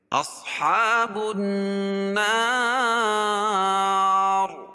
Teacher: اور نون مشدد ہے غنہ ہوگا اور وقف کی حالت میں را پور ہوگی کیونکہ را ساکن